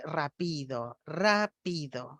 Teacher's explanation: en vez de ubicar el cambio de altura tonal en la primera sílaba de la palabra está ubicando en la segunda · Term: acentuación atípica